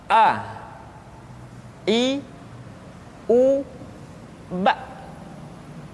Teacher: Yang pertama adalah huruf A. Makhraj ketika mengucapkan huruf A berada pada tenggorokan yang terjauh.